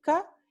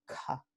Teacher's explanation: Alófono fiel K y alófono infiel con aspiración K